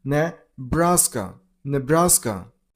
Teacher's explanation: Stress on the middle syllable, on brass sound,